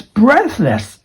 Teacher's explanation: Going up in the first syllable, going down for the second syllable. It's just like a seesaw going up, and this one goes down.